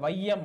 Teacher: ஐகாரம் சொல்லில் முதலில் வரும்பொழுது 1.5 மாத்திரை அளவில் ஒலிக்கிறது. அப்போ முதல்ல வரப்ப நம்மளுக்கு என்ன ஆகுது அப்படின்னு சொல்லிட்டு பண்ணா 2 மாத்திரையில இருந்து அரை மாத்திரை குறைந்து 1.5 மாத்திரையில ஒலிக்குது. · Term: ஐகார குறுக்கம்